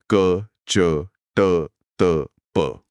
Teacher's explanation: क्या होगा जब विसर्ग का सामना किसी अघोष वर्ण से हो जाए। अघोष वर्ण यानी वो वर्ण जिन्हें बोलते समय गले में कोई कंपन नहीं होता।